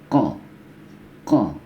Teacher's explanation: ini ko di pangkal tenggorokan ya.